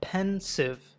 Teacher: ఈ 2 సిలబల్స్లో మొదటిది stressed syllable, రెండవది అన్స్ట్రెస్డ్ సిలబల్. ఎందుకంటే మొదటి దానిని పెద్దగా వినిపించేలా పలుకుతున్నాం.